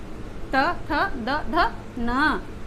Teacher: त वर्ग का उच्चारण स्थान है दंत